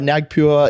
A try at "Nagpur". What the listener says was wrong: Nagpur. There's no E on the end of pure.